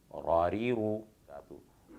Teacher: ज़ुबान की गुलाई जब ऊपर के दांतों के मसूड़ों में लगे रा अदा होता है। मखरज के एतबार से इसका नाम तरफिया है, क्योंकि ज़ुबान की गुलाई वाले हिस्से को तरफ़े लिसान कहते हैं और ये ज़ुबान के अतराफ़ से अदा होता है तो तरफिया कहलाता है।